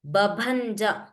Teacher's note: प्रथमः बकारः अल्पप्राणः the second one is महाप्राण